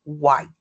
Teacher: So, in white uh the second syllable is Well, first it's one syllable, right? But the t is at the end and it's glottalized which mean which means that there's um like a stop.